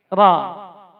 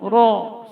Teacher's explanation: Karena ra huruf tebal, huruf tafkhim. Tidak juga dibaca dengan mulut monyong, ro, salah juga.